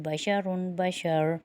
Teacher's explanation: با زبر با، شین زبر شا، بشا را دو پیش رن، بشرن بشر۔ یہاں پر را ساکن ہو جائے گا حالت وقف میں، اور را سے پہلے زبر ہے تو اس لیے را کو موٹا پڑھیں گے